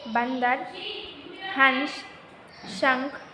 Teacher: अम अनुस्वार का उच्चारण नाक से किया जाता है, इसे वर्ण के ऊपर लगाया जाता है, जैसे बंदर, हंस, शंख आदि।